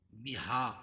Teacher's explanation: بہا کھڑا زبر قائم مقام الف مدہ کے، بہا کھڑا زبر قائم مقام الف مدہ کے، اس کو ایک الف کے برابر کھینچ کے پڑھیں گے۔ ذا الف مدہ ہے، ذا کو یہ لام میں ملائیں گے، ذل حدیث، ذل اور لام پڑھی جا رہی ہے، اس کے بعد حروف قمری کے 14 حرفوں میں سے ہا ہے۔